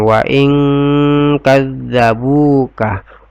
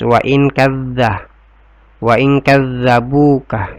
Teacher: Karena nun sukun ketemu dengan kaf, jadi cara membacanya adalah dengan berdengun. Wa ing, di sini tinggal ya, wa ing antara nun dengan kaf ya, didengungkan. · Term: ikhfa